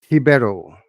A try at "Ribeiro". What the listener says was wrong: Ribeiro. You gotta roll the R's, man. Anna Ribeiro.